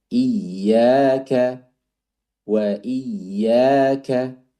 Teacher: kafnya itu bisa ditambah lagi untuk hamsnya